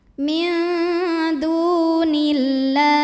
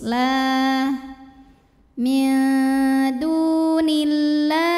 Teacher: Min dunillah, lam pada lafaz Allah atau lam jalalah dibunyikan secara tarqiq sebab huruf sebelumnya kasrah, maka bacanya tipis